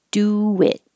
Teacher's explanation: when you have a rounded sound, do, and then an unrounded sound, your lips go from small forward to back. Do it. And it makes an invisible W.